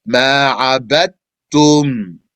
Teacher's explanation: Because yes, even though in Arabic there's a ta here and after a dal, so that would be D, T. But the dal merges into the ta when you read it. So you're going to pronounce two tas instead of a dal and a ta.